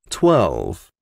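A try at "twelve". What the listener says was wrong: 12. 12. Esa V suena como una F. 12.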